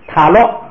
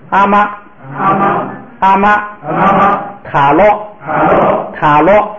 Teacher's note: 第2个呢，就不要再低了往高处升，就直接读成平声